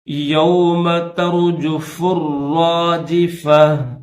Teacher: گول تا پر اگر وقف کریں گے تو ہا پڑھیں گے، ملا کر پڑھیں گے تو تا پڑھیں گے